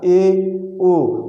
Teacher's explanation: जिसमें मुख समृत स्वर से थोड़ा अधिक खुलता है उसको हम अर्ध समृत स्वर कहते हैं।